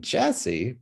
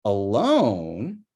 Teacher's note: Alone, suddenly there's an entire, the vowel has to be lengthened, and the entire like up down thing has to be moved over, because whereas it didn't for Jesse. For Jesse, it's just high low. For alone, it's low high low, with the high low going over to the alone part.